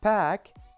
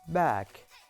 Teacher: p is voiceless bilabial stop. B is voiced bilabial stop.